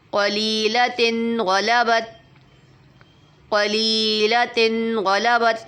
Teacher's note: لی کو کھینچیں گے، تن پہ غنہ نہیں کریں گے